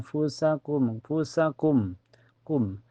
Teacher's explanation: sukunnya disamarkan kefa dan ditahan sampai terasa ke hidung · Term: ikhfa ausat